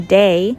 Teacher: The TH sound in A.A.V.E oftentimes turns into the alveolar D